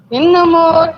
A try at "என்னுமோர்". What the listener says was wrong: அந்த இடத்துல என்னுமோர் சொல்லாம அந்த மோ வந்து குறிலா சொல்லுங்க. என்னும் ஒரு இயல்போடு அப்படி குடிலா சொல்லுங்க. நெடிலா கேக்குறது.